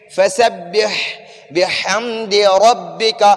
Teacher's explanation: را کو اوپر پڑھیں گے کیونکہ را کے اوپر فتحہ ہے، زبر ہے